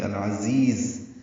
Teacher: اس میں دو زا ہیں العزیز میں، دونوں زا تیز صفیر کی آواز سے ادا کریں گے